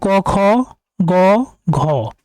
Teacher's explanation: প্রথম দুটি হচ্ছে অঘোষ এটা আমরা মনে রাখবো অঘোষ ধ্বনি পরের গুলো হচ্ছে ঘোষ ধ্বনি এবং প্রথম এবং তৃতীয় হচ্ছে অল্পপ্রাণ এবং দ্বিতীয় এবং চতুর্থ হচ্ছে মহাপ্রাণ তাহলে আমরা দেখতে পাচ্ছি হল মহাপ্রাণ ধ্বনি হবে দ্বিতীয় এবং চতুর্থ বর্ণ খ নম্বর দ্বিতীয় এবং চতুর্থ বর্ণ।